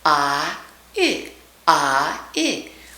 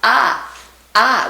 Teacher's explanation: We just put the first part of the diphthong in.